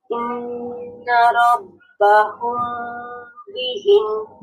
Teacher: ম সাউন্ডটার মধ্যে একটু দেরি করতে হবে, একটু গুন্না করতে হবে। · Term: ইকফা